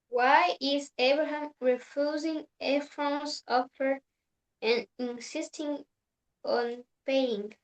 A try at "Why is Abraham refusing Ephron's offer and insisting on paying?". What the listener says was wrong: Okay, good question. Very well pronounced.